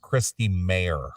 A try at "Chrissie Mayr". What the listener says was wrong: Yeah, Chrissie. No T.